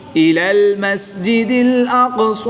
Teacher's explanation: تو یہاں ہم قاف میں قلقلہ صغریٰ بھی کریں گے اور اس کو پور بھی پڑھیں گے